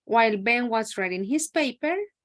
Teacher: notice that it is like rising intonation